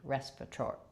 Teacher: And then that letter A is going to be an and then we have secondary stress on the T, tori, so true T there